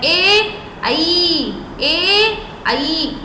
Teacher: कंठ और तालू ये कंठ और तालू दोनों से मिलकर बनता है